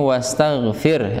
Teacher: huruf sin yang disukun sama dia mempunyai sifat juga rakhwah atau rikhwah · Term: sifat rakhwah